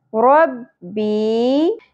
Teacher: یائے مدہ ہے ایک الف کے برابر کھینچیں گے